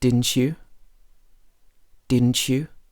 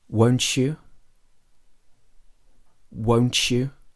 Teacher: a T plus a Y sound becomes ch.